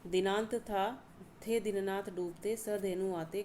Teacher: यहाँ पर जो दंत्य वर्ण है वो आए हैं द न त थ, द न थ